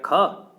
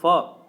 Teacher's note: ख तो कंठ से, च तालु से, फ ओष्ठ से बोला जाता है